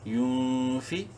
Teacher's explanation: نون ساکن کے بعد فا حروف حلقی میں سے نہیں ہے، غنہ کریں گے یعنی اخفا کریں گے اس نون میں۔